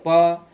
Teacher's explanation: प, तो इसमें क्या होता है, जो भी हमारा जो आवाज निकला है ना वो ओंठ से निकलता है, इसलिए इसे ओष्ठव्य व्यंजन बोलते हैं